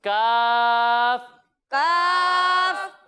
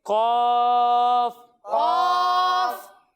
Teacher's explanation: جب ہم کاف کی ادائیگی کریں گے تو اسے ہم باریک پڑھیں گے، لیکن جب ہم قاف کی ادائیگی کریں گے تو یہ حروف مستعلیہ میں سے ہے تو اسے ہم موٹا کر کر پڑھیں گے